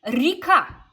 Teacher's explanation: an unstressed y is just pronounced like an E